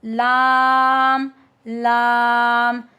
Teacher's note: जुबान की नोक ऊपर के दांतों के मसूड़ों से जब लगती है तो हमारे पास लाम अदा होता है। Tip of the tongue एट gums of upper teeth.